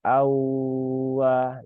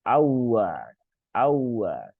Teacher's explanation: Padahal ini bukan mat ya. Ini bukan mat. Maka jangan jangan dipanjangkan ya.